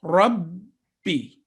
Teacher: There are two sounds joining together to make it a mushaddad.